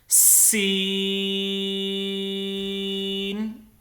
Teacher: سین جو ہے 3 سے 5 الف کے برابر اس کو لمبا کرنا ہے، اور اس میں سیٹی کی آواز آنی چاہیے۔ جیسے میں پڑھ رہا ہوں آپ میری آواز سن سکتے ہیں، سین، اس کے اوپر کوئی نقطہ نہیں ہے۔